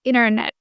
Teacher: you have to drop the T sound whenever you are talking fast.